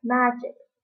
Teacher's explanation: the word magic, the stress is on the first syllable